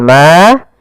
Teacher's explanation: Ada mad thabi'i yaitu fathah bertemu dengan alif panjangnya dua harakat.